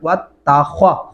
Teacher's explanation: ख्वा को मोटा और पुर करके पढ़ेंगे